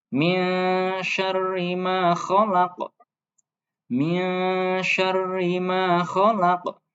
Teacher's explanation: Oke, terus kesalahan selanjutnya yang biasa diucapkan itu adalah ketika qaf. Qaf, huruf qaf ketika di akhir ayat maka harus dibaca sukun atau dimatikan. Ketika dia mati maka harus dipantulkan ya. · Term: qalqalah kubro